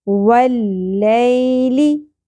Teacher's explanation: یا ساکن سے پہلے زبر، یا حرف لین ہوگا یہاں پر اور اس کو نرمی سے ادا کریں گے. واللیلی، لی شارٹ رکھنا ہے اور اس کو اپنے مجہول طریقے سے بھی نہیں پڑھنا.